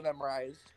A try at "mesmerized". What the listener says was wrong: It's mesmerized, not memorized. You said memorized.